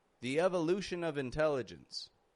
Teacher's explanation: we are totally using that V sound to link those words together